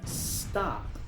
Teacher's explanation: Muchos pronuncian esta palabra stop, pero cuando una palabra en inglés empieza con s, no se pronuncia es, empieza con el sonido de s